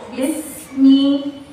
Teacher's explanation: السين يوجد بها صفتين، صفة الهمس وصفة الرخاوة. أجي ريان النفس وريان الصوت.